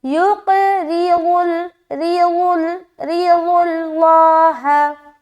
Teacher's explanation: قاف کو موٹا رکھیں گے اور قلقلہ بھی کرنا ہے